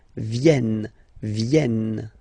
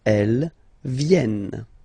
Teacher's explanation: this classic ending ENT for the third person of the plural is here, but phonetically it doesn't exist, so you don't pronounce it.